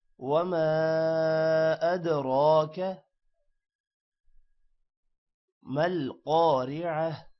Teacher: الف پر مد ہے اور دال پر قلقلہ ہے، را موٹا ہوگا